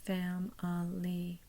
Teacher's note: The fam is the primary stress. The I is a schwa.